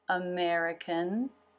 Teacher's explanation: Lips come together for the M. And the tongue comes up to make the N.